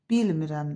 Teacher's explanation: İnkar şəkilçisi vurğu qəbul eləmədiyinə görə həmişə özündən əvvəlki hecada olur vurğu. Bilmirəm də birinci hecadadır.